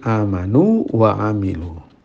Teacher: mad dengan panjang 2 harokat yang wajib didatangkan untuk memisahkan antara 2 wawu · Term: mad tamkin